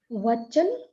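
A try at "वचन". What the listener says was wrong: Not Vachan. First you have to correct this. Vachan, cutting the vowel. It is Vachana. The word is Vachana. Not Vachan.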